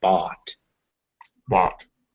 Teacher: make sure you're getting an ah sound in there not an o sound